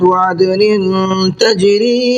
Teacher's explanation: یہاں نون کے نیچے تنوین ہے اور تنوین کے بعد میں تا ہے، تو یہاں بھی نون کے اندر اخفا کرنا ہے